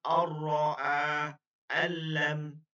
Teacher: গুন্না করা যাবে না কিন্তু মিলানো হবে